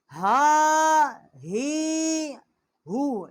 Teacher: یہ بڑی ہا ہے، اقصائی حلق سے اس کا مخرج ہے